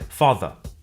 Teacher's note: that the final R sound is not pronounced in British English father ends in a simple schwa vowel